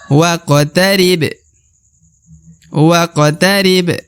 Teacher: apabila berharakat sukun ya berharakat mati maka dibaca waq waqib nah huruf ba di ujung juga termasuk huruf pantul karena berharakat sukun maka dia harus dibaca pantul ya diqolqolahkan atau dipantulkan waqtarib nah alifnya tidak dibaca ya waqtarib